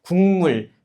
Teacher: 기역은 니은 앞에서 뭐로 발음돼요? 이응으로 발음되니까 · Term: 비음화